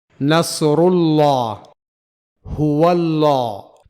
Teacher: عربی کا موٹا لام یعنی انگریزی کا ڈارک ایل · لفظ اللہ سے پہلے ضمہ یعنی پیش یا فتحہ یعنی زبر ہو تو اس کے لام کو موٹا پڑھا جائے گا، یعنی اسے ہیوی لام پڑھا جائے گا، جسے انگریزی میں ڈارک ایل کہا جاتا ہے۔